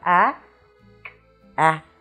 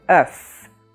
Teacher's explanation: that vowel is what we call the open eu and it only appears in what we call a closed syllable now when we say closed syllable what I mean by that